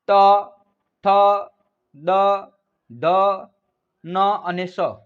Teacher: પછી છે દંત્ય કે જે તમારી જીભ છે દાંતે અડશે